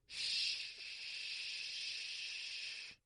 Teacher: you have your lips pushing away from your face. You have your tongue high in both the front and the middle.